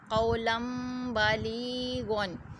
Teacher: نون ساکن کے بعد اگر با آ جاتا ہے تو اس کو میم سے بدلا جاتا ہے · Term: انقلاب کا قاعدہ